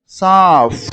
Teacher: இது பிஹெச் அந்த சவுண்ட் வரக்கூடாது, எஃப் சவுண்ட் வர மாதிரி நம்ம படிக்கணும்.